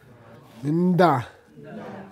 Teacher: Notice the pre-nasal, the slight French N sound or nasal sound in front of the D.